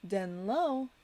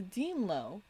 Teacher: replacing the alveolar na to the bilabial ma